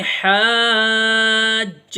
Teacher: یہاں پر مد آ گیا ہے، اس کو کھینچ کے پڑھیں گے اور جیم کے ساتھ ملائیں گے